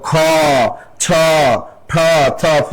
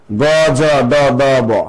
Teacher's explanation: এগুলো শ্বাস বেশি লাগে মহাপ্রাণ